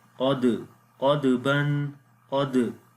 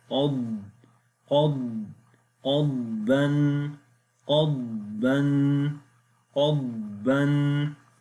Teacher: make sure do not make a qalqala sound on the dad